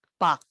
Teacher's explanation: But some of you guys make the sounds like 박, like this, but don't make the sounds like k. We should stop in 박, and stop. No k.